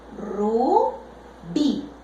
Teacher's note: Separo en sílabas, rubí. Por el sonido, yo observo que esta palabra tiene la última sílaba más fuerte.